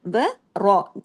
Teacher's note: واؤ باریک ہو جائے گا، را ہیوی ہو جائے گا